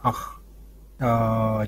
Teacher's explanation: висарга, которая две точки справа от гласной, они дают ей придыхание, глухое придыхание.